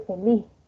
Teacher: se aspira eh Es decir que suena en la laringe esa S como una Ja laringe no entonces en posición final